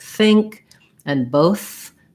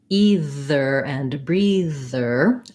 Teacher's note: for both sounds the th sound is made with my tongue resting gently between my teeth